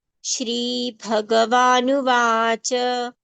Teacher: Bha is a mahapran sound, so it should be given more breath and more strength.